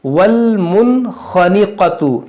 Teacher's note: ہم اظہار کا قاعدہ لگائیں گے بغیر گننا کے پڑھیں گے والمنخنقۃ. دیکھیے یہاں پر دو حرف مستعلیہ بھی ہے خا اور قاف، اس کو موٹا بھی کریں گے اور اس میں کچھ ہم نہیں کھینچیں گے کیونکہ سب متحرک ہے.